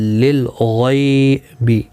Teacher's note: غین مستعلیہ ہے، پر پڑھنا ہے. غی یالین ہے، تھوڑا نرمی کے ساتھ کھینچ کر ادا کریں گے